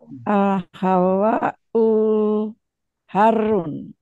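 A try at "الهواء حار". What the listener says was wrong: Panjang pendeknya coba Bu dilatih lebih teliti dikit.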